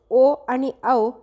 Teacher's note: कंठोस्थ म्हणजेच कंठ आणि ओष्ठ म्हणजेच ओ आणि औ हे स्वर कंठोस्थ स्वर आहेत